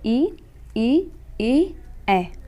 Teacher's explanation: जिह्वा के अग्रभाग से उच्चरित, जैसे ई, ऐ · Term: अग्रस्वर